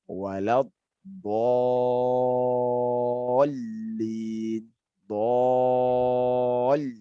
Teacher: di ayat yang terakhir bagian waladdallin itu mesti ditasydid kan? Maksudnya adalah dikeraskan bahagian lamnya.